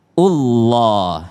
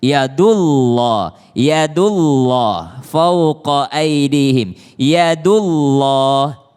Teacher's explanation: Ketika dia berbaris dhamma bertemu dengan Allah, maka dia juga tebal, Allah, ya.